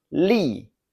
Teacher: This has a sharp falling tone.